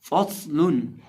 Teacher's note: निचले होंठ का वस्त जब सामने वाले ऊपर के 2 दांतों के किनारे से लगता है तो फ़ा अदा होता है। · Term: फ़ा का मखरज